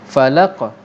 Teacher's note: Qalqalah ini bermaksud detakkan ataupun lantunan. Dia melantun sikit.